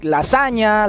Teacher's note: it is represented on the international phonetic alphabet as a voiced palatal nasal